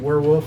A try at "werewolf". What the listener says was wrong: There's an L in the word.